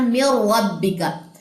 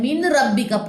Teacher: नून साकिन के बाद अगर रा आ जाए तो यहाँ पे इदगाम करेंगे, लेकिन गुन्ना नहीं करेंगे, इदगाम बिला गुन्ना।